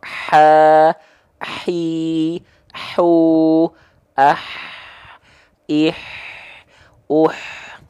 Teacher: ha kecil dia punya sifat hams Kenapa dia mengalir bukan percikan karena disandingkan dengan sifat rakah dari segi suara lemah mengalir suaranya